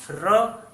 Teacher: र पे जीभ मुड़ा कि नहीं ऊपर जाके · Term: मूर्धा